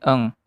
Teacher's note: Dari contoh tersebut, maka dapat diprediksikan jika terdapat bunyi hambat velar seperti K dan G, maka akan dijumpai bunyi nasal velar dalam bahasa Indonesia, yaitu bunyi eng